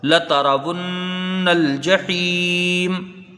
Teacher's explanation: یہاں پر نون مشدد ہے، ایک الف کی مقدار غنہ ہوگا